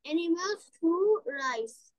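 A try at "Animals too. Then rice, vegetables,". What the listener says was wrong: এখানে তো full stop, তোমাকে থেমে যেতে হবে। Animals too. Then next line, rice, vegetables, milk, etc.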